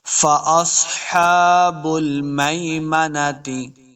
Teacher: سواد کو موٹا کریں گے، سواد حروف مستعلیہ سے ہے